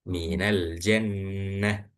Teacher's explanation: huruf tak marbutoh dan diwakafkan, maka dibacanya berubah menjadi huruf H.